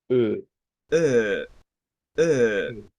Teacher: es una e pero con nuestros labios redondos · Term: e abierta redonda